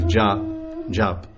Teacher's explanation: they don't say A in Hindi, they cut off the A, this long A, jap. They don't say japa.